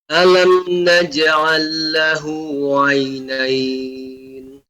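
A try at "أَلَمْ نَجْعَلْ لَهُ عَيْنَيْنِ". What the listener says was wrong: Ainnya lebih ditampakkan Bapak, ya. Alam naj'al lahu 'ainain.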